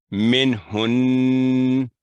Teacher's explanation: 2 second गुन्ना करके उसी हालत में उसको छोड़ना है